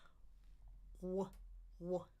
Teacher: what is your tongue doing? It's pulling in the back. Way in the back. And just barely creating some friction there. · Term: semi vowel